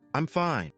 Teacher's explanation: with a flat tone, it sounds serious, maybe even a little unfriendly. But if you add a little rise and fall, I'm fine.